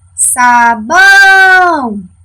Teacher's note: O bão é a nossa sílaba tônica da palavra sabão.